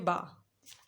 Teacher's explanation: ये बंद होठों के गीले हिस्से से अदा होता है